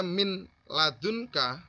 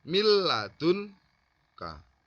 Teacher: Jadi perbedaannya idgham bihuna dengan bilahuna, yang pertama yang idgham bihuna tadi adalah melebur dengan sertai dengung, sedangkan idgham bilahuna itu melebur tidak dengan disertai dengung